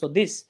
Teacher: জিহ্বার আগা উপরের দাঁতের আগার সাথে লাগা উচ্চারণ করছি